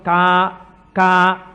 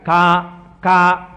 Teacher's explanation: కా కా పలకాలంటే ఎక్కడ పలకాలి? కంఠం దగ్గర పలకాలి. కా కా అంటే ఇక్కడ పలకాలి.